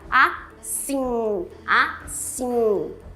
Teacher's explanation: você faz esse M final simplesmente uma nasalização no I Então fica um I nasal